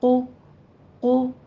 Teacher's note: क़ुलूबिहिम में क़ाफ को पुर पढ़ते हुए होंठों को गोल कीजिए